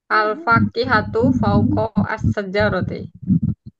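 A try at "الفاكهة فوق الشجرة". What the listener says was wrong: Panjang pendeknya dijaga, Bu, untuk kata terakhir. Alfa Alfa kihatu. Nggak apa panjang-panjang. Jimnya, paukos syajarati.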